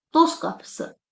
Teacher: Bizim bu sözün sonundakı t samitimiz düşmüş kimi tələffüz ediləcək.